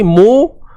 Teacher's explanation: Tiga huruf ni sebutannya perlu dimuncungkan bibir sebab ada baris depan.